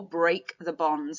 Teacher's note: Note the fact that we've got plosive alliteration here in this metaphor, break the bonds